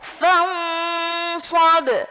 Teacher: Sod huruf tipis apa huruf tebal? Tebal. Jadi mendengungnya sudah harus tebal. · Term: ikhfa ausat